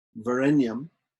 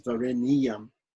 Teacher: the padam word, Varenyam, has to be split and recited as Vareniyam